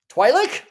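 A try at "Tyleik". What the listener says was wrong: No, there's no W. It's Tyreek, man. It's just like Tyreek, but there's an L.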